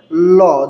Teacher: ল যখন উচ্চারণ করি এটা দাঁতের গোড়ার দিকে আঘাত করে। তার কারণে এই ল কে অনেকে বলে দন্ত ব্যঞ্জন।